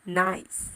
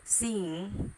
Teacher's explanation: airflow is being stopped in your mouth, but the air is actually going through the nose to escape. So these are nasals.